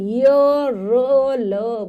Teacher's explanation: जब हम इनका उच्चारण करते हैं तो हमारी जिवा हल्की सी ऊपर की ओर उठती है लेकिन पूरे ऊपर वाले स्थान को टच नहीं करती